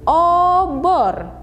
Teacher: Perbedaan utama terletak pada posisi lidah. Vokal O, bunyi vokal ini dihasilkan dengan membulatkan bibir dan mengangkat bagian tengah lidah